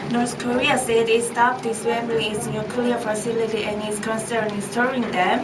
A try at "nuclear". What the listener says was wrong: Hold on. Nuclear. Try to emphasize the stress so that it won't sound monotonous.